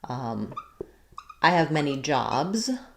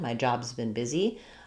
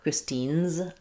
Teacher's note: So that S or Z sound just attaches onto the word.